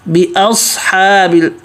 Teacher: حمزہ پتلا صاد موٹا، حلق سے